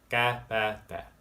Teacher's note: They're unaspirated, making them a little bit different from English. There's another difference with these, is that when they show up at the end of a word, they are what is called unreleased, or not pronounced all the way.